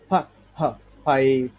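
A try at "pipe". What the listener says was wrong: না এটা তো হচ্ছে বাতাসটা বের হবে না,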